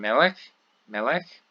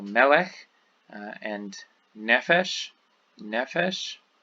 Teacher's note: the stress, instead of being on the final syllable, is here on the syllable before the end. So the penultimate syllable.